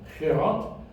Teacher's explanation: the G represents a guttural sound, a rough sound that is made in your throat